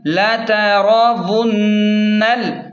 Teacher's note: نون کو ڈائریکٹ لام کے ساتھ ملا کر پڑھیں. نون لام زبر نل، لا تراون نل.